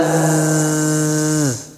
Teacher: dia berdesis cuman berdesis nya tidak nampak ke huruf s